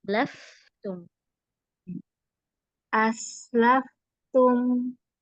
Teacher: Jadi suaranya itu nggak berhenti fa-nya.